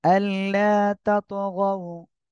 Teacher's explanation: দেখেন, আল্লাহ 1 আলিফ টান, তাতগাউ, ত কলকলা হবে। তারপরে গও, দ্রুত পড়তে হবে নরম করে